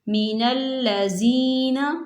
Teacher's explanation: یہاں پر یا مدہ ہو رہا ہے، اسے دو حرکت کے برابر کھینچ کے پڑھیں گے